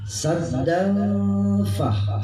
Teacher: sengau, seperti orang kalau sengau, samar